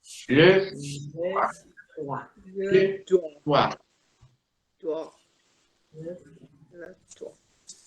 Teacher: La E final en monosílabos suena siempre debilitada. No es E del español, no es E, es le, una E, pero debilitada, por dar término a un monosílabo.